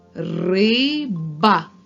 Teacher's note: перший звук р твердий приголосний наступний звук и голосний б твердий приголосний а голосний давайте поділимо це слово на склади